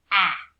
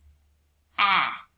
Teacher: short a opens up wide and says ah